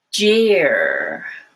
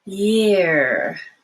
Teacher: So take a look at these two, jeer, and the other one is year, and your breathing goes all the way through it. The first one has a stop of the airflow